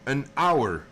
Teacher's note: the word hour starts with the sound ow, and ow is a vowel sound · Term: silent H